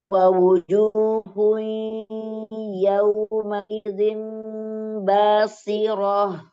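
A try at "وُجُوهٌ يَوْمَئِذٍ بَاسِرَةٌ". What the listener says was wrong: Jangan memanjangkan huruf r.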